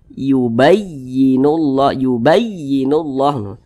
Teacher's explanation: suaranya itu sedikit lebih tinggi dibanding dengan huruf yang di samping-sampingnya Jadi huruf ya ini ditekan ditinggikan intonasinya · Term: naber